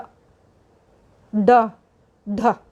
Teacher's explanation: जब उच्चारण करते हैं तो जीभ की जो नोक है वह झटके से नीचे गिर जाती है। जैसे ढ बोलोगे, ढ ड ढ, तो हमारी जो जीभ है वो एकदम से झटके से वापस नीचे गिरती है। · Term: उक्षिप्त